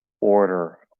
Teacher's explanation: I'm not even using the tip of my tongue. I'm just using the sides of my tongue and tapping there.